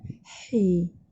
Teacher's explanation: Ha pedas makhrajnya di tengah-tengah kerongkong.